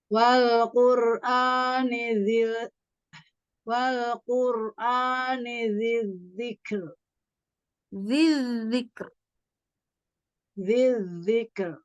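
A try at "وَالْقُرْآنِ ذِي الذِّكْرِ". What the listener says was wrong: Ya. Oke, bagus.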